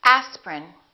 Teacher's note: each one of these words contains one vowel one syllable which is not pronounced